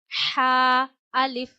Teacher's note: ह गले के दरमियान से अदा होता है।